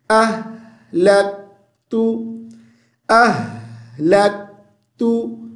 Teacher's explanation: آگے لام کو کاف کے ساتھ لک، لک، ک، یہ آواز پیدا نہ ہو. لک تو، لام کو کاف کے ساتھ ملائیں گے تو آواز کو بند کر دیں گے